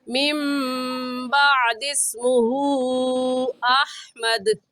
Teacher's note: حروف مدہ اس میں الٹا پیش ہے، اور حمزہ اگلے کلمے میں آ گیا تو مد منفصل اور مد جائز ہوگا، اور اس مد کو ہم 3 الف کی مقدار کھینچیں گے، اس سے کم یا زیادہ نہیں کھینچیں گے